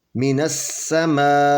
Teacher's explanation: اے نہیں پڑھیں گے، اے مجہول ہو جائے گا، ای پڑھیں گے، ای، حمزہ زیر ای، من السماء، یہ یا سے پہلے زیر ہے تو اس کو 2 حرکت کے برابر کھینچ کر پڑھیں گے۔